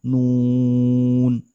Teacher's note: Nun ini dibaca mengikuti mad arid lis sukun sehingga dia dibaca panjang. Nun dengan dhamma yang sempurna.